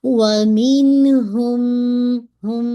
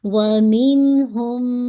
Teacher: मीम की आवाज को मीम के अंदर मुदगम कर देंगे मर्ज कर देंगे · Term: अकमल गुन्ना